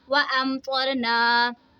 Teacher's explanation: یہاں پہ دیکھیں جی میم ساکن کے بعد با اور میم کے علاوہ کوئی بھی دوسرا حرف آ جائے تو وہاں پہ اظہار شفوی ہوتا ہے، یعنی ہم نے یہاں پہ میم ساکن کی آواز کو ظاہر کر کے پڑھنا ہے، کوئی غنہ نہیں کرنا